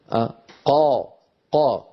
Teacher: فالصورة التي على يمين اللوحة والتي تبين القاف نجد بأن الصوت قد استعلى إلى أعلى الفم ولكنه لا يطبق. لاحظوا الصوت قد استعلى إلى أعلى الفم ولكنه لم ينطبق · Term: الحرف المنفتح